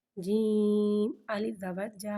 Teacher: الف سے پہلے زبر آ رہا ہے، الف مدہ ہو رہا ہے، لہذا حرف مدہ کو ایک الف یعنی 2 حرکات کے برابر کھینچ کے پڑھیں گے اور زبر کو منہ کھول کے ادا کریں گے